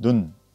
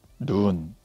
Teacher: 짧게 길게 발음하는 것으로서 눈과 눈은 말뜻이 구별되고 있죠